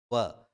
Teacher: दोबारा फिर प्रयास कीजिए कि जीवा को जो है वो दांतों को स्पर्श नहीं करे और फिर व बोल कर देखें आप, आपको अनुभव हो जाएगा कि व का उच्चारण करते समय हमें दांतों की भी सहायता लेनी पड़ती है और ओष्ठ की भी सहायता लेनी पड़ती है। तो दोनों का योग जब हो जाए तब जाकर के वो व का उच्चारण करता है, तो दंतोष्ठ।